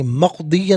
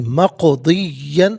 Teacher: حتمن مقدیہ غلط ہے، حتمن مقدین، اور مقدین میں قاف ساکن ہے، حرف قلقلہ ہے، لیکن آواز لوٹتی بھی محسوس ہونی چاہیے، مقدین نہیں مقدین، یہاں وقف کریں گے تو مقدیہ پڑھیں گے۔